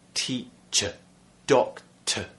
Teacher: Number one, the schwa sound, in words like teacher, doctor. Okay, at the end of words where we have this ER